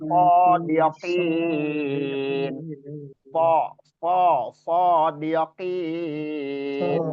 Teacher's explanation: Ujung gigi seri bawah dengan ujung lidah kita sejajar, satu ya. Kedua, pangkal lidah kita posisinya terangkat atau mengangkat ke langit-langit atas bagian dalam. Itu yang menimbulkan sifat sifat isti'la'nya. · Sembari pangkal lidah diangkat ke langit-langit atas yang menimbulkan sifat isti'la'nya. Isti'la'nya itu terjadi karena terangkatnya anak lidah atau pangkal lidah kita ke langit-langit atas bagian dalam.